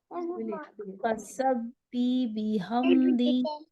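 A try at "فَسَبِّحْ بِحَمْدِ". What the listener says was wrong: नहीं, अब फसब भी पढ़ती हैं तो हा गायब हो जाता है। फसब भी, फसब भी, और अब देखिए अर रहमान वाला जो हा है ना, अर रहमान, बिहम्दी,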